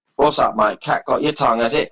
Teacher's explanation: la glotalización da este ritmo cortado al inglés británico de Londres